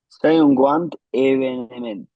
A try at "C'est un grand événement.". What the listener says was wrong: Oh, événement. Oh, it's technically événement, but yeah, but you can shut off that E in the middle. Événement.